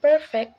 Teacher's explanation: here the first syllable per is stress giving us perfect not perfect